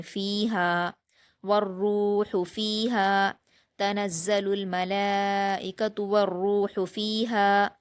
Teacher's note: ہا پر الف مدہ ہے، 2 حرکات کھینچیں گے